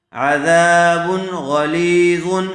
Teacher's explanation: تنوین کے بعد حروف حلقی میں سے غین آیا ہوا ہے، اس لیے بغیر غننے کے جلد اظہار کر کے پڑھیں گے